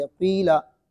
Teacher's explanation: इशारा करते हुए होंठों को गोल करके पढ़ेंगे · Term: इश्माम